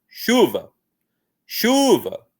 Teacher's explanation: Aqui a gente tem força no chu. Essa que é a sílaba tônica, então.